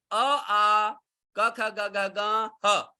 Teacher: इनका मुख्य स्थान क्या है कंठ, ये कंठ से बोले जाते हैं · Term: कवर्ग